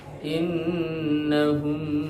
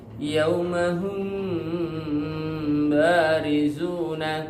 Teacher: Pengucapan yang benar tentang cara mengikhfakan huruf mim sukun pada huruf ba adalah dengan itbaqo, yaitu merapatkan atau menutup dua bibir tanpa mengerutkan, ya, tanpa menekan, dengan tetap memperhatikan gunnah. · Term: ikhfa syafawi